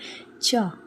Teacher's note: च बोलने में कहां स्पर्श कर रही है। कंठ में कर रही है क्या? नहीं कर रही। कहां कर रही है? तालु में।